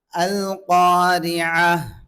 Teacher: ஐன் வரணும் சில பேர் அல்காரியா யா என்று சொல்றாங்க தவறு · ரா முரக்கீ கஸ்ரா பெற்று வரதுனால மெல்லினமா சொல்லணும்